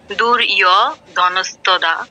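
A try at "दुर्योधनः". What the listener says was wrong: আচ্ছা, দূর ইয় কেন? ওকার আছে না? দূর ইয় ধনস্তদা।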